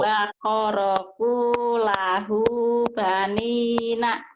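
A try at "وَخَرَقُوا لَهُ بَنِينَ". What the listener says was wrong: Wa kharaku lahu banina. Ibu koknya sering ketuker ya. Koknya jadi ho jadi ko, ketuker-tuker.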